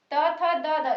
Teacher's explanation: इसमें हम दांतों की मदद लेते हैं, दांतों के बीच में हमारी जीवा आती है